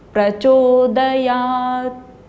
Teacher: अंतिम त भी देखिए हलंत, उसमें अ नहीं है, तो प्रचोदयात, त पूरा नहीं करना है, त बोलते हुए जिह्वा जहाँ दंत के पीछे रह गई वहीं रख करके चुप होंगे